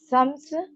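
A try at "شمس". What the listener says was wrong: शीन निकालो। शम्स पहले वाला शीन, दूसरे वाला सीन।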